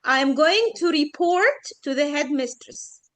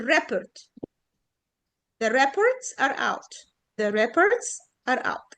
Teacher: السكند syllable هي اللي عليها stress بقت verb